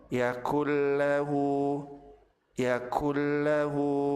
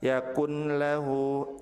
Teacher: Apabila nun sukun bertemu dengan lam, maka nun dilebur ke huruf lam tanpa ditahan dan tanpa disertai dengan gunnah.